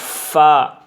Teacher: یعنی آپ کے دونوں دانت آپ کے نیچے والے ہونٹ پر لگیں گے تو یہ فا نکلے گا